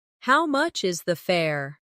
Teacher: The stress is on how much and fare. This makes it clear and easy to understand.